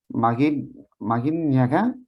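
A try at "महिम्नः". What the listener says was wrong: Mahimnaha. because there is Jakara, with the Nakara, there is Sandhi and it has become Nya. But with Makara and Nakara, you can just pronounce them as they are. So Mahimnaha.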